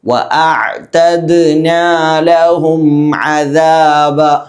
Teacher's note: അവിടെ ഐന് ശ്രദ്ധിക്കണം. ഐന് തൊണ്ടയുടെ മധ്യഭാഗത്ത് നിന്നാണ് പുറപ്പെടേണ്ടത്.